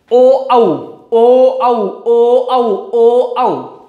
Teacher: कंठ की सहायता से बोला जा रहा है, और होठ की सहायता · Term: कंठोष्ठ स्वर